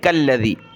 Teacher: یہ باریک کاف ہے، اس کو لام کے ساتھ ملائیں گے